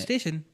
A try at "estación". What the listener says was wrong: नहीं तो स्टा ऐसे जो है वो स्टासियोन होगा कि एस्तासियोन होगा? इट्स स्टार्टिंग विद ए. ता आ ते ई ओ एन ए.